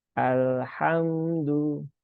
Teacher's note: Nah, di sini ada lam sukun ya. Membaca lam sukun itu jangan ditekan-tekan ya. Karena dia sifatnya itu adalah di pertengahan ya. Dia tidak tertahan dan juga tidak mengalir. Maka alirkan sedikit saja.